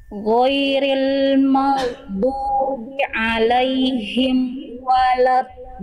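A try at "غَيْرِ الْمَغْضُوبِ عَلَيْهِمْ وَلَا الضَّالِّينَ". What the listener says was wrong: Jangan berhenti amnya Bunda. Amnya masih agak berhenti, jangan berhenti. Ghairil maghdubi alaihim waladdallin. Walad, jangan walad, bukan walad, wala, ya. Huruf wawu dan lam tipis. Huruf dot Bunda, tahu Bunda huruf dot dilafalkan makhrajnya dari mana? Bagaimana cara melafalkan huruf dot? Betul, pangkal lidah naik ke atas itu untuk tebalnya.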